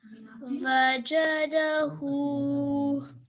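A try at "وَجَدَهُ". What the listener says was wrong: Excellent. Mashallah. Your timing is really, really good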